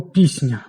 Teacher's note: Ми чуємо у ньому м'який звук «сі», тому що «ні», «ня» тут м'який і своєю м'якістю пом'якшує попередній «с». «С» перетворюється на «сі».